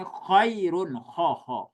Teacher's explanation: Jadi bukan k tanpa gesekan tapi ada gesekan